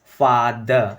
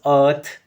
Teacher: we will drop the R's will not pronounce them if there is no vowel sound after it